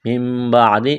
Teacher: اقلاب کریں گے نون کو میم سے تبدیل کرنا ہے. من بعد غنہ کریں گے.